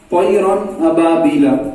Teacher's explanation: حمزہ حروف حلقی کے حروفوں میں سے پہلا حرف ہے حمزہ. تنوین کے بعد حمزہ آیا, اس لیے ہم نے نون کو ظاہر کیا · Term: اظہار